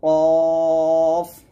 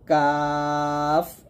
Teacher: কফ মোটা হবে, কাফ পাতলা হবে